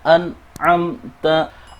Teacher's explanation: Baik nun maupun mim dibaca sebagai izhar atau jelas.